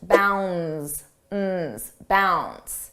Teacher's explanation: the D is not pronounced